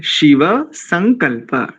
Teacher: पहले में तालव्य बाद में दंत्य, शिव संकल्प, ऐसा ठीक है, बहुत बढ़िया।